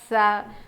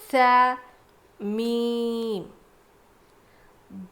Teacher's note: सा हल्का पढ़ना है, बिल्कुल ज़ुबान को ऊपर के दांत पे लगा के पढ़ेंगे तो अदा होगा सा। इसको स या फिर स ऐसी आवाज़ नहीं आएगी, एकदम हल्का पढ़ेंगे।